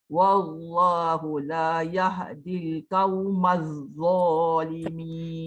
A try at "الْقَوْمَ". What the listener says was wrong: Tebalkan sikit qaf. Qaw. Jangan kau.